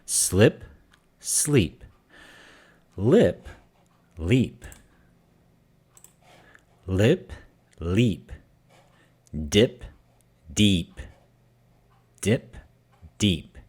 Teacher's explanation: So slip and sleep, lip and leap, dip and deep. If we say deep shorter, dip, it necessarily becomes a different sound. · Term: short E long E